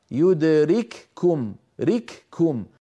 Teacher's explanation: كافين الأولى مهموسة مفصولة عن الثانية، فهذا ثقيل